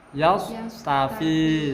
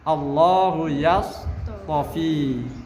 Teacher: Makhrajnya tidak boleh geser ke makhrajnya shad. Tetap di makhrajnya ta, akan tapi dia bersifat idbaq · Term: huruf idbaq